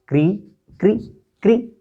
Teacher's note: मूर्धा से री आ रही है